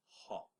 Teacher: say ah while swallowing the h with the dot underneath for the emphatic h made in the throat